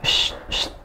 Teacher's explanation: untuk shin dia nafasnya menyebar ya, udaranya menyebar dan mengalir. Wash ish, kayak kita ngusir ayam.